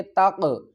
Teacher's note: قاف ساکن ہے، حروف قلقلہ میں سے ہے، ہلا کر پڑھیں گے۔